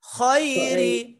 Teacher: বাংলাতে যে খ এটার মতো না খটা আরো মোটা করে মুখ ভরে